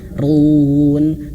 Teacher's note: huruf ro-nya di sini dibaca tebel, bukan tipis. Run, bukan hanya sekedar run, tapi tebel kan. Pangkal lidahnya diangkat.